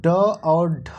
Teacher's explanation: मूर्धन्य व्यंजन जो होते हैं वो ड और ढ होते हैं